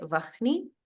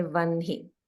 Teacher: it's pronounced with the N first, followed by the H. So we don't say Vahni, we say Vanhi.